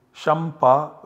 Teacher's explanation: Similarly, shampa, and this anusvara is followed by pa, so this anusvara always gets substituted by the savarna of pa. So the nasal savarna of pa is ma, so the output generated is shampa with ma.